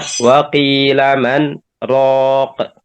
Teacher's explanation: jadi kita berhenti sejenak tanpa bernapas, ya, kemudian lanjut lagi, maka ini disebut dengan sakt.